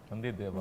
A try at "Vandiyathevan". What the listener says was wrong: Vandi, but with the A pottanga.